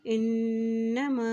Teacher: इन्नमा हमज़ा की ज़ेर को नून के साथ मिलाते हुए पढ़ेंगे क्योंकि नून के ऊपर शद है, और जब नून के ऊपर शद आ जाती है तो वहाँ पर गुन्ना भी किया जाता है